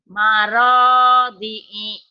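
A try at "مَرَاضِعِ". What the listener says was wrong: Pendek. Maradi'i. Maradi'i.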